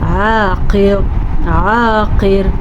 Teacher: دیکھیں یہاں پہ را ہمارے پاس گلابی ہے یعنی کہ پر پڑھیں گے، وہ اس صورت میں کہ اگر ہم یہاں پہ رکیں گے نہیں، رکنے کی صورت میں را باریک پڑھی جائے گی، را ساکن ہو جائے گی، رکنے کی صورت میں ساکن را سے پیچھے زیر ہے تو پھر را باریک پڑھی جائے گی۔